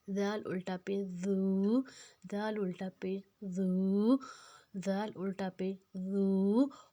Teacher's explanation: اب زال اور سا ایک ہی طریقے سے ہمیں ادا کرنا ہے، زبان کی نوک کو دانتوں کے کنارے میں لے کر اس کو نرمی سے ادا کرنا ہے، سیٹی نہیں لگانی۔